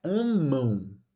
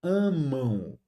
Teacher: o A fica um a nasal e o M vira U. Então, quando ocorre vogal + M ou vogal + N palavra, esse M ou esse N viram u ou viram i.